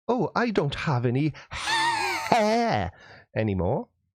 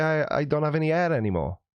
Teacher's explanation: Welsh people just drop the H.